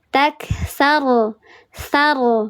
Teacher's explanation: ra tafkhim, dibacanya tebal. Diangkat pangkal lidahnya, dikeraskan.